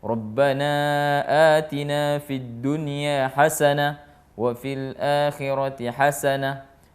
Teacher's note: semuanya nun sukun ketemu ya, tidak dibaca dengan dengung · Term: izhar